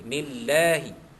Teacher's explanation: Dini, di dalia bawah di mad asli. Nillahi, kenapa Allah tu dibaca tarqiq nipis? Kerana huruf nun sebelumnya baris bawah